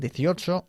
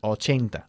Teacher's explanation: We emphasize the second syllable of 18, 18, and the first syllable of 80.